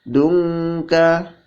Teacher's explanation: nun sukun bertemu dengan ka, hukumnya ikhfa, dibaca samar dengung dan ditahan